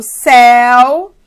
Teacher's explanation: Como eu falo céu, então mais forte é o E, ele é a minha vogal. E ele carrega esse U que nasceu para ser semivogal, que de fato é mais fraca. Então, esse U é semivogal aqui, de fato. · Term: ditongo